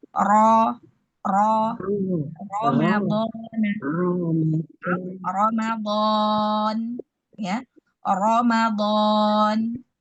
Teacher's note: menebalkan huruf ro yaitu dengan mengangkat pangkal lidah ya. Sehingga pada saat kita angkat itu bagian lehernya itu mengencang.